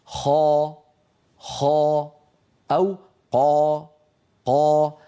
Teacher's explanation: ويصطدم صوتها بقبه الحنك ويعود برنين بصدى يملا الفم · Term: حرف الاستعلاء